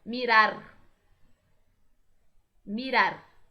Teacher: Percebam que o R vibra.